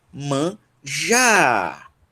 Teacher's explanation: a última palavra é manjar e a sílaba tônica dela é já